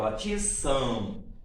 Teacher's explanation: sai um pouco de ar, aqui, olha só, pela cavidade bucal e outra pela cavidade nasal, certo? Pelas fossas nasais. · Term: ditongos nasais